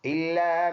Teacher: حمزہ اور لام کو ملائیں گے اس زیر میں، لام جماؤ کے ساتھ، الف مدہ ہے.